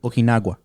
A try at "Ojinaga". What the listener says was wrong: No, Ojinaga. No W or U or whatever that is.